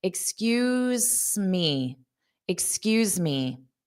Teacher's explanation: So, you're going to hold out that S a little bit.